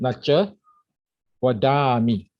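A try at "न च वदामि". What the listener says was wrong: Absolutely correct.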